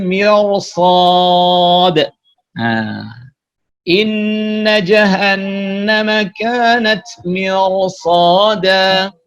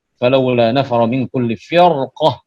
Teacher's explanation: Artinya setelah ra itu adalah huruf isti'la. Maka ra yang semestinya dibaca tarkik masuk dalam pengecualian, sehingga tidak dibaca tarkik tapi dibaca tebal.